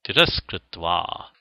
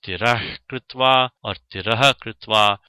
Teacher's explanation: sa in place of the visarga of tiras even when tiras does not have the gati sanya, and therefore we get the additional optional form tiras kritva.